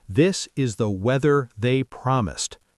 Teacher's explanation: Tongue between teeth, but with voice. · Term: hard th, hard TH